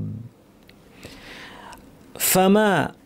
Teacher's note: ফামা, এখানে শুরু থেকে পড়লে ফাটাকে ফ্যাস ফ্যাসে স্পষ্ট করে পড়তে হবে।